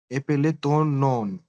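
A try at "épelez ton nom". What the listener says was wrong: No, no. M is silent. Epele to no. You're saying nom. You're saying nom. Nom नहीं है. No. Yeah, epele to no.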